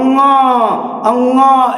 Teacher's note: और अंगा जो है कंठ अनुनासिक, अंगा, अंगा, यहां से आवाज निकल रही है, प्लस नाक का सहायता लेकर बोला जाता रहा है, इसलिए कंठ अनुनासिक